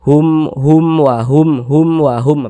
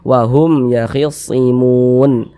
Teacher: Nah maka dibaca jelas tak berdengung jadi baca pendek saja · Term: izhar syafawi